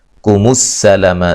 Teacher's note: سین کو باریک سیٹی سے